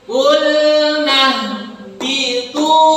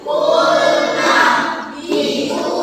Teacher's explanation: Karena harkatnya domah, di depannya ada waw sukun. Nah, waw sukun ini yang membuat tunya jadi panjang.